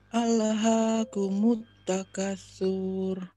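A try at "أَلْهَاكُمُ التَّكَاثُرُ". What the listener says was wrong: Takanya dua ketuk, Bu. Coba.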